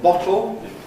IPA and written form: ˈbɒtl̩ (bottle)